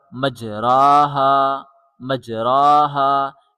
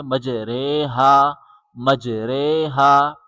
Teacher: درست طریقہ امالہ کے قاعدے کے مطابق اسے مجریہا، مجریہا پڑھا جائے گا، یعنی را کی آواز کو جھکا کر رے کر دیا جائے گا